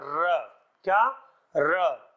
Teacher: इसे प्रकंपित क्यों बोलते हैं? कि इसको बोलते समय क्या होता है? कंपन होता है। बोल के देख सकते हैं जीव में, र।